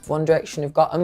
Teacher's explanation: we have a Glottal T and we also have a reduction of the 'th' sound in them